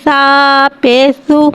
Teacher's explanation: سا کو ایک الف یعنی 2 حرکات کے برابر کھینچ کے پڑھیں گے۔ سا نرمی والا حرف ہے، لہذا اس میں سیٹی نہیں آئے گی، اس کو بغیر سیٹی کے ادا کر کے پڑھیں گے۔